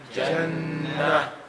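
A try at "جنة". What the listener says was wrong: You have to hear the hat sound, right?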